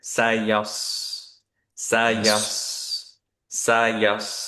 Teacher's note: সদ সুকুনে অনেকেরই সিনের মতো হয়ে যায়